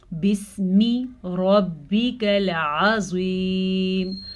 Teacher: را کو پر پڑھنا ہے کیونکہ را پہ زبر ہے. عین کے تلفظ کا خاص خیال رکھنا ہے، عظیم کا مطلب غلط بن جائے گا.